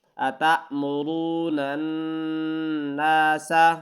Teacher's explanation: یہاں را کو پر پڑھنا ہے یعنی موٹا پڑھنا ہے، اور نون کو نون کے ساتھ ملانا ہے، تشدید ہے تو یہاں پر غنہ ہوگا۔